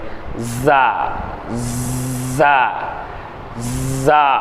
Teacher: நாவின் நுனியின் சற்று மேல் பாகம் பற்களின் நுனியில் படுமாறு உச்சரித்தல்